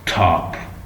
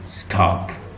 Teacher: the first one is aspirated and second one is non-aspirated. So the T, so here the top and stop, it is allophone.